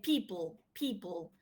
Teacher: there is aspiration in the first per but not in the second one